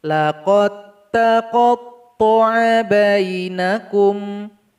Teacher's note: huruf dal sukun berjumpa dengan huruf ta yang bertasydid. Cara bacanya nggak boleh pakai qalqalah.